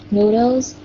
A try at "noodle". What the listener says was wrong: Đừng có noodles. Đừng có xì, noodle.